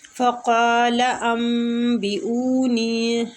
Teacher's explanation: قاف مستعلیہ حروف ہے، پر پڑھیں گے